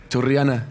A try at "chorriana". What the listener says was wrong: Chorriana. Ah, okay, but you don't usually say it. You're like choriana. Yeah, but I mean the double R, is it hard? You can do it, but you're not used to doing it.